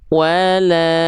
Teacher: dia dibaca dengan vokal A, tapi kadar pelafalannya dibaca dengan kadar panjang yang lebih panjang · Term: mad tabi'i